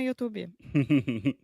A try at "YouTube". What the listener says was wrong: Perfect. Perfect.